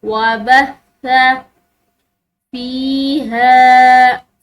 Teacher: فا کے بعد یا ساکن آ رہی ہے تو اس کو ہم نے ایک الف کی مقدار کھینچنا ہے